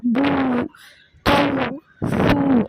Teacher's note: இரு உதடுகளையும் குவித்து வெளிப்படுத்துவது போல், அதுதான் ஊ. 2 லிப்ஸும் வந்து நம்ம ரவுண்ட் பண்ணோம் அப்படின்னா அந்த தொம்மா சவுண்ட் கிடைக்கும்.